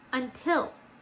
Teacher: The accent is on the second syllable, isn't it? So we got to get rid of it on this one and we got to put the accent on the second syllable, just like that.